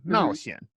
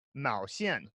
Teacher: She meant to say, I like a guy who likes adventure, and that's Mao Xian. And so fourth tone, third tone, Mao Xian. And then she accidentally said Mao Xian, second tone, fourth tone, which means I like a guy who enjoys yarn, because that's Mao Xian is yarn.